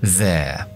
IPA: ðeə